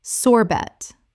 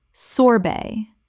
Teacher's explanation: Correct pronunciation, sorbet. The t at the end is silent in both British and American English.